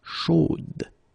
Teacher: So here you pronounce the final D, whereas in the masculine form you don't pronounce it.